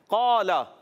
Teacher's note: قال، سب سے پہلا حرف قاف. قاف ادا ہوتا ہے زبان کی جڑ اور تالو کے نرم حصے سے